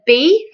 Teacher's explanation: when we say B we should be able to feel that vibration